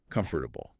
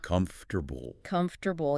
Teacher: The vowels in the middle are almost entirely erased. · >> The guide notes that beginners tend to overunciate, trying to pronounce every single letter based on the spelling. They will carefully say it with four distinct syllables.